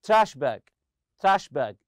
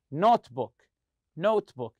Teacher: separate nouns they are made of two separate nouns the stress goes on the first part of the compound noun